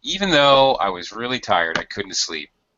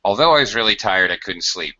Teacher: I tend to give it more emphasis when I use even though